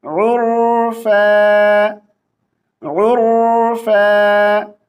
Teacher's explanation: आगे देखिए, आइन को रा के साथ मिलाएंगे, रा को मोटी आवाज से पढ़ेंगे मगर कलकला नहीं करेंगे। उर्फा उर इस तरह नहीं पढ़ेंगे।